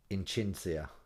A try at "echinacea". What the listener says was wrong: Yeah, and you'd have missed the A.